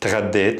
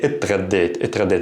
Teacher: if you're having trouble with the two consonants here, t and gha, saying them together, you can add an e at the beginning. So you can say اتغديت, اتغديت.